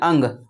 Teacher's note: आपका मुंह से भी सांस निकलने की कोशिश कर रहा है और नाक से भी निकलेगा